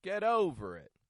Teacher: It's not raising in the tone. It's just a quiet, unstressed, kind of sound.